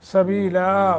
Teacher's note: नून तनवीन को ख़त्म कर देंगे वक्फ की वजह से अलिफ पर रुकेंगे